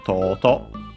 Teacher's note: Accent on the first syllable, despite being technically a Chinese compound